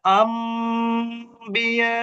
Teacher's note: আম হবে। নুনটা মিম হয়ে যাবে।